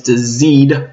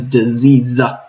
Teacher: The student transcribes that as a duh alveolar, a stop, versus the fricative z.